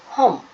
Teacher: ಕಂಠನಾಸಿಕ ಅಂದ್ರೆ ಗಂಟಲು ಮತ್ತೆ ಮೂಗು ಎರಡು ಸಹಾಯದಿಂದ ಹುಟ್ಟುವ ಅಕ್ಷರಗಳು